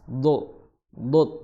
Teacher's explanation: Huruf do makhrajnya adalah di pinggir lidah bertemu dengan gigi geraham atas